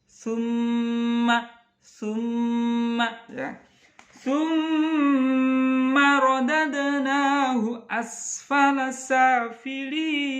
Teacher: Summa dengungnya 3 saja · Gunnah musyaddadah. Ya, dengung dikarenakan bertasdid, hurufnya bertasdid. Kalau tidak bertasdid tidak berdengung, cuman ada 2, nun sukun, nun tasdid sama mim tasdid.